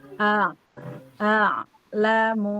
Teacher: Nah, harus jelas beda antara Hamzah dan ain. Hamzah itu dari bawah tenggorokan ain tengah. Jadi, dari bawah naik ke atas sedikit. Dari bawah tenggorokan naik ke tengah.